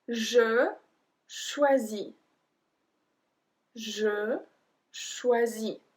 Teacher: We don't pronounce the S at the end.